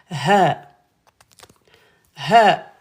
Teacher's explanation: Là c'est la lettre ha hello il y a de l'air qui sort là au fond de la gorge